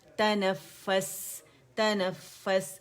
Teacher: फा पे बहुत ज़्यादा देर नहीं रुकना कि 2, ढाई, 3 तक चले, जस्ट जमाओ देना है, शो करना है कि लेटर ट्वाइस है